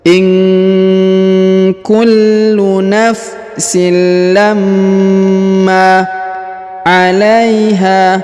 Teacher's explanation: huruf ha dipanjangkan dua harakat karena di depannya terdapat Alif